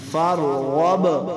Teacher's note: با حروف قلقلہ سے ساکن ہے، تو یہاں پہ کیا کریں گے؟ قلقلہ کریں گے، تو یہ وقف بھی اسی طرح ہوگا جیسے رواں میں پڑھا، کیونکہ آخری حرف ساکن ہے۔